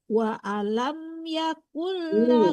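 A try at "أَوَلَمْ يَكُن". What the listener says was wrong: Kebanyak Ibu. Bukan wa alam tapi awalam.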